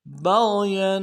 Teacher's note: با کو غین کے ساتھ ملانا ہے، غین کو موٹا ادا کریں گے ، یا کے اوپر تنوین ہے، یہاں پہ اظہار ہوگا، بغيا